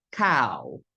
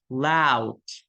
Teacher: The A is longer in duration and forms the nucleus. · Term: diphthong AU